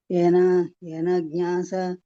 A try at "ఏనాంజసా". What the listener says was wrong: ఏనాంజస మాతాజీ, జ్ఞా లేదు అక్కడ, ఏనాంజస.